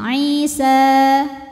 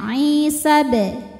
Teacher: Alifnya alif bengkok atau alif maksurah. Jadi kalau berhenti panjangin Isa. Namun jika wasal pendekin sinnya Isabe. Kenapa? Karena gugur madnya. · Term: takhallus bil hadfi